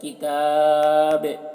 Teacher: دیکھیے با کی آواز ٹکرا رہی ہے، جنبش ہو رہی ہے، اسے قلقلہ کہتے ہیں